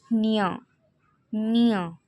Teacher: जब हम निया का उच्चारण कर रहे हैं तब हम नाक से भी हवा आ रहा है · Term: नासिक व्यंजन